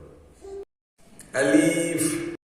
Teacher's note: আলিফের উচ্চারণ কণ্ঠনালীর ভেতর থেকে আসে এবং এটি উচ্চারণ করতে জিহ্বার অগ্রভাগ মুখের তালুতে অন্তরকে স্পর্শ করে করতে হয়।